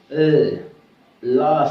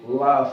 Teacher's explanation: When you produce la sound, your tip of tongue will raise it and touches the alveolar ridge, and the air comes through the both side of the tongue. This is called the lateral.